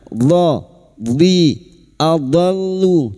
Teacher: huruf dhad tapi lidah nempel pada gigi geraham atas, boleh kiri boleh kanan